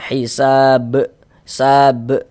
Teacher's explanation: Huruf ba termasuk salah satu huruf qalqalah kan, dan ini dia sukun tadi jadinya. Sukun karena disukunkan, maka dipantulkan hisab. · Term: qalqalah kubra